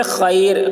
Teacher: رائے ساکنہ سے پہلے یائے ساکنہ ہو تو رائے ساکنہ ہر حال میں باریک ہوں گی